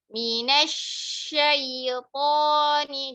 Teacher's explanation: shinnya dikasih aliran lagi kayak sya